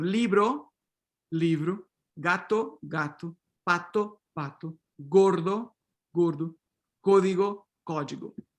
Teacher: Unstressed, word final unstressed o raises to u, or sometimes all the way up to u